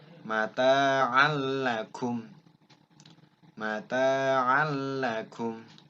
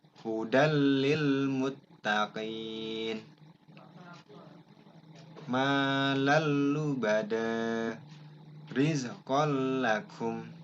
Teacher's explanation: Ya, idgham bila gunnah terdiri dari 2 huruf, yaitu la dan ro. Bunyi n-nya masuk dengan tak dengung, mengikuti huruf yang ditemui berikutnya.